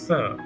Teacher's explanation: स एक उष्म व्यंजन होने के साथ-साथ अघोष भी है।